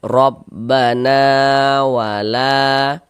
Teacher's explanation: Mad thobbi'i panjang dua harakat sesuai rumus tiga yang warna hitam.